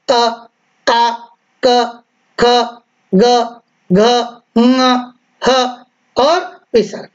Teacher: इनका उच्चारण स्थान कंठ है। जब आप बोलेंगे तो कंठ पर जोर आएगा।